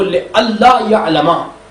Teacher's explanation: ہم نے نون اور لام کو قریب المخرج ہونے کی وجہ سے نون کو لام میں تبدیل کیا اور لام کا لام میں ادغام کر دیا